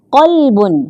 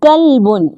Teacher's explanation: قلب، موٹی قاف کے ساتھ اس کا مطلب ہے دل، جبکہ کلب باریک کاف کے ساتھ